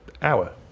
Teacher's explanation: you don't pronounce the h at the beginning of hour